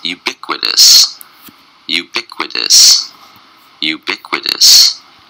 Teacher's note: ubiquitous was four syllables and a stress is on the second syllable